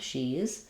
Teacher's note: not two syllables just one with the tense e sound